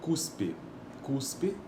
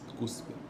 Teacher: Veja que esse S ele é desvozeado